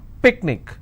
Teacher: Picnic, I will stress on pick.